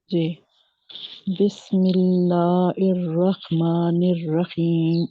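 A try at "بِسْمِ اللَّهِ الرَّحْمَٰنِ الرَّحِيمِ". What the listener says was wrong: आप इर्रहमान नहीं कहें, गौर से देखें, हा के नीचे जेर हा है, हमजा नहीं है, इर नहीं है, हिर रहमा। ہوتا کیا ہے کہ الرحمن کہتے ہوئے آپ حمزہ کا مخرج استعمال کر رہے ہیں، کیونکہ یہ دونوں ہی نیبر ہیں نا، ایک جگہ سے ہی نکلنے والے ہیں،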